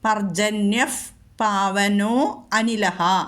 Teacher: പർജന്യഹ കഴിഞ്ഞിട്ട് പാ വന്നതുകൊണ്ട് അവിടെ രണ്ടിടത്തും ഫ് വരണം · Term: ഉപത്മാനീയം